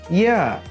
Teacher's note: ইয়া হরফটি জিহ্বার মাঝখান থেকে উচ্চারিত হয়।